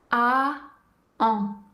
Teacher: Pour le son en, la bouche prend la même forme que pour prononcer le son A. Et ensuite, le son devient nasal. Encore une fois, on garde bien la langue à plat dans le fond de la bouche.